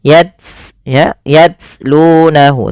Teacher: pertama baca dengan syiddahnya dulu, baru ambil dengan hamasnya, hamas aliran nafasnya